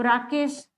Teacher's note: इसमें राकेश शब्द में किसी भी प्रकार से नाक से हवा नहीं आ रही है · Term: निर्नुनासिक